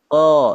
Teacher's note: Pangkal lidahnya naik ya. Nah, tengah lidahnya ditarik ke belakang ya, sehingga dia menjadi suaranya menjadi tebal. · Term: isti'la